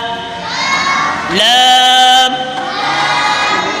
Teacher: زبان کا کنارہ اور آگے کی دو داڑوں سمیت دانتوں کی جڑ سے ادا ہوتا ہے۔